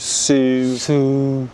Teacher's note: So we're using the back closed vowel sound u.